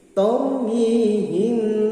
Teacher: ra mati sebelumnya berbaris fathah maka dibaca mufakham atau tafkhim